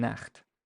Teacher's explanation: So it's a voiceless velar fricative.